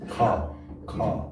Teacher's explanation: So it's not ka, but it's like Ka, ka. Yes, there is a flow of air after the K sound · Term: K with aspiration